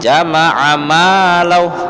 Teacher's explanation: Yang diayun tuh ma-nya, huruf mimnya, karena ma-nya itu ada mad tabi'i alif, ada alifnya.